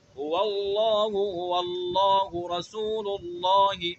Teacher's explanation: ایسا اللہ کا لام جو پر پڑھا جا رہا ہے وہ حرف فرعی ہے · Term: لام مفخمہ